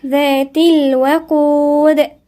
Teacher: هنا الذال من الحروف اللثوية، والتاء مكسورة. ذات الوقود، ونحافظ على الواو مرققة.